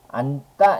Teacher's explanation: 겹받침 니은 지읒 같은 경우에 자음 앞에서 니은으로 발음하는 거